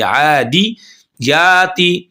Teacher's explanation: अब यहाँ पर आदे आते नहीं पढ़ेंगे, ठीक है ना, आइन और या को खींचेंगे, दाल को मजहूल नहीं पढ़ेंगे